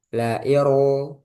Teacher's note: Jadi ir ro sukunnya itu langsung tebal.